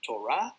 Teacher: Torah ends with the letter he, but the last thing you hear is the a, not h.